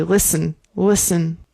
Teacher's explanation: Also, we do not pronounce the t.